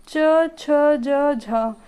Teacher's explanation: जो च वर्ग होता है वह पूरा स्पर्श संघर्षी होता है